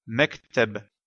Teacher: dans le mot mektab, la lettre ba à la fin est bien associée à une voyelle, mais on ne la prononce pas puisqu'on s'arrête à cet endroit.